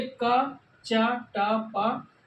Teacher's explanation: का चा टा पा, तो वायु कम निकल रही है क्योंकि ये है अल्पप्राण